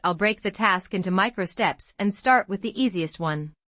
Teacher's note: Notice the stress on break and micro steps. The word micro steps has three syllables.